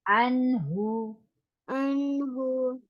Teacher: This is noon sakin, but the next letter is throat letter, so we will not stretch here